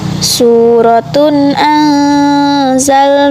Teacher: Terdapat kaidah huruf ra dibaca tafkhim sebab berharokat fathah.